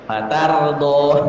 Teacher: Ta tambah ra, maka ra-nya tebal. Fatardha, tamu, ta, ta tipis, ra tebal.